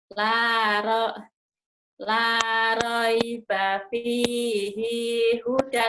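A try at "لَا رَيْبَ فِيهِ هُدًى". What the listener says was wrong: hi-nya pendek. La raiba fihi hudan. Fihi hudan. La roi. Jangan. La raiba. Raiba. Rai.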